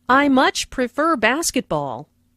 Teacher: Notice how “much” is stressed to show that the speaker really likes basketball.